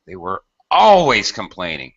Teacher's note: And notice also, as far as expressive intonation and expressing this idea, I often emphasize or highlight the adverb, always, constantly.